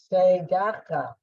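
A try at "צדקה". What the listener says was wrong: Not say, just t.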